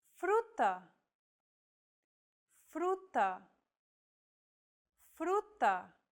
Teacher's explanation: on the second letter Rue this Trill sound is done by lightly tapping the gum Ridge behind your upper teeth with the tip of your tongue it should be a quick striking motion similar to The Sensation you get when pronouncing the T in